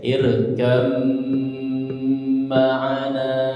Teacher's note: Ketika huruf ba sukun ketemu mim di depannya, maka dia melebur kepada huruf mim ya, ba-nya melebur kepada huruf mim ya.